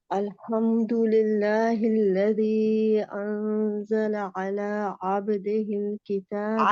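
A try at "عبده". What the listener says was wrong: عبدی اپنی جتنی زیریں ہیں نا ان کو مجہول نہیں پڑھنا، معروف پڑھنا ہے. بیماری کی طرح پڑھنا ہے، ہمارے کی طرح پڑھنا نہیں ہے.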